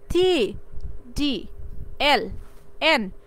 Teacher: এটা হলো আমাদের যে অ্যালভিওলার রিস্ক খসখসে যে উপরে মানে ফ্রন্ট দাঁতের পিছনে যে খসখসে জায়গাটা আছে এই জায়গার সাথে গিয়ে লাগবে যেমন টি টি দেখতো টি এই যে আমাদের উপরের দাঁতের পিছনে যে মানে পরবর্তীতে যে খসখসে জায়গাটা আছে টি ডি এল এন লাগতেছে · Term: অ্যালভিউলার সাউন্ড